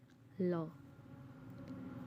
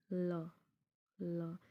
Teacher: इसमें जो वायु है, जो हवा है हमारे मुंह की, वो हमारी जी हाँ यानी जीभ के बगल से निकल रही है, ठीक है। ल, ल यानी जो हवा है वो हमारी जीभ के बगल से निकल रही है। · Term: पार्श्विक व्यंजन